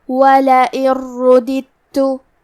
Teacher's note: آخری میں نون ساکن ہے، پھر حرف الراء ہے۔ راء حروف الادغام بغیر غنہ میں سے ہے، تو ہم یہ حکم کو بغیر غنہ سے لیکن تشدید کے ساتھ ادا کریں گے